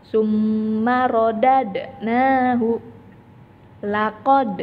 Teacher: la kode disitu penjelasannya ada huruf Dal mendapat harakat sukun maka huruf Dal yang berharkat sukun ini harus dibaca dipantulkan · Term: bacaan Qalqalah, bacaan qalqalah